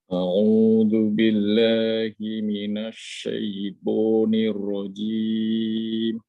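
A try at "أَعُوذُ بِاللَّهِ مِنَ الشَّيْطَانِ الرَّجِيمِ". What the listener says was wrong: Ya, tebalkan lagi Pak. Nior rajim. Nior. Karena ingin menanya, alasan kenapa ditebalkan ro pada kalimat ta'ud, pada perkataan syaitonir rajim. Padahal itu ada kasroh sebelumnya kan. Kenapa tidak nir rajim?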